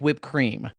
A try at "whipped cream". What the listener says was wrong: You're saying it weird. Why are you putting so much emphasis on the H?